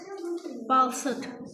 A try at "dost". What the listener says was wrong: Nə? Bal deyil o. D, o, s, t. Dost.